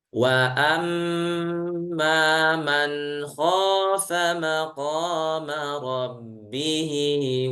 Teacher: Nun yang bertasdid mim yang bertasdid mohon dibaca dengan e tempo gunah yang dipanjangkan